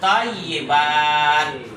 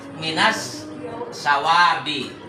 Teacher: Karena alnya dibaca idgham, lebur dengan huruf yang di depannya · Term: samsia